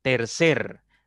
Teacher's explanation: tiene dos sílabas y la que suena más fuerte es la primera contando de derecha izquierda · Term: palabra tónica